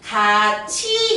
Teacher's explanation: 같이라는 티읕이 이를 만나서 치읒으로 바뀌었죠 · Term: 구개음화